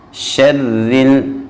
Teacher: جب را مشدد ہو اور اس کے نیچے زیر آ جائے تو را کو باریک پڑھا جاتا ہے۔